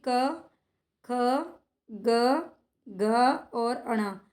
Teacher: दूसरा और चौथा जो व्यंजन होगा वो महाप्राण होता है